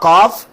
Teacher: قاف جو حلق کا اوپر والا حصہ ہے، ٹھیک ہے، تالو کی جانب، وہاں سے ادا ہوا۔